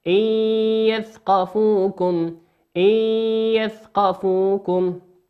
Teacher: النون في كلمة إن هي نون ساكنة أتى بعد حرف الياء، والياء من حروف الإضغام بغنة، يغن بمقدار حركتين.